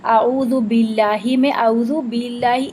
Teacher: एयर का शामिल होना। जब हम ब के अंदर एयर को शामिल कर देते हैं तो बा की आवाज पा से मुशाबे हो जाती है और अरबी में पा कोई लफ्ज नहीं है। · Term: हम्स